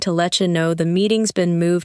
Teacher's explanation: You may notice that let you sounds like letcha,